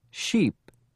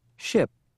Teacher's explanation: make the E long and drop your voice at the end also remember to complete the vowel before adding any final consonants for I keep the sound short and relax your tongue don't spend a lot of time on the I vowel shorten